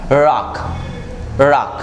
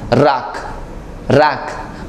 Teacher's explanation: and for example this is your lip now you have to take your lip forward make it in round shape and pull up your tongue at the back side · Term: American pronunciation